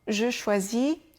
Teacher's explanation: on n'entend pratiquement plus le je